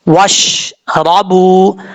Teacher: را کے اوپر زبر ہے، را پر پڑھا جائے گا. واؤ کو پڑھتے وقت ہونٹ گول کریں گے